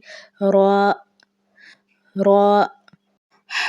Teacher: Last میں ہے را۔ را زبان کی نوک اور مقابل کے تالو سے ادا ہوتا ہے، جیسے کہ را، را۔